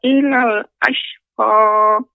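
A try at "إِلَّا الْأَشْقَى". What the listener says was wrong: Ya, di sini Nek bedakan ilal dengan illal. Di sini ada tasydidnya Nek. Ya, illal ashqa.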